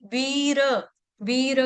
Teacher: री मा दीर्घ ठीक है उसके बाद है वीर मुयति वीर वीर का र पूर्ण आना चाहिए और वी क्या है दीर्घ लंबी